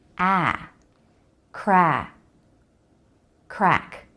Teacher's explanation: lots of jaw drop for this one the back of the tongue lifts the tip of the tongue stays down